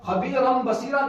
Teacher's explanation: جائے گا تو فوراً کہیں گے کہ اقلاب کا قاعدہ ہوگا، یہاں تنوین کو میم سے بدل کر پڑھا جائے گا